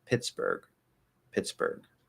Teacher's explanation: There's just a regular G at the end, which you can stop if it doesn't link to anything, or you can let out a little weak G.